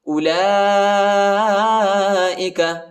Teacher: اولئک، وہ نہیں پڑھا جاتا، وہ کے اوپر حرکت نہیں ہے، لام پر کھڑا زبر اور بڑا مد ہے، اس کو تقریباً 3-4 سیکنڈ تک کھینچیں گے